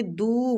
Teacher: دو وہ مد کے ساتھ ہے، دو کو بھی ایک حرکات کھینچیں گے۔ نِلّٰہِ، ادھر اللہ کی لام کو ہم نے باریک پڑھنا ہے نون کی کسرہ کی وجہ سے، ٹھیک؟